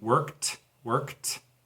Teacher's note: the original verb work, changes to ed, and it sounds like a T